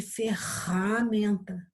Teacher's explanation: O som foi bem forte lá no fundo da nossa garganta. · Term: som forte